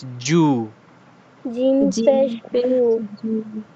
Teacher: হামজা পেশ উ >> হামজা পেশ উ >> বা পেশ বু >> বা >> তা পেশ তু >> তাছা পেশু >> জিম পেশ জু >> জিম পে >> এটা অনেকে জিম বলেছেন জিম না এটা জিম শক্ত জিহ্বার মাঝখান থেকে হ্যা জিহ্বার মাঝখান উপরের তালু বরাবর লাগবে